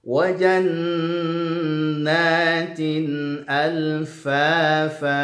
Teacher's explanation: Wa jannatin alfafa. Wa jannat ada nun bertasydid, maka nunnya dibaca dengan dengung ya. Kemudian ada jannatin, ada kasratani baris 2 bertemu dengan huruf hamzah, hukum bacanya ada izhar halqi ya.